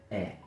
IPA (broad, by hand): e